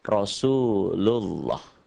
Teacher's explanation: lafaz Allah ini dibaca tebal, berbunyi O, karena sebelumnya ada yang merah.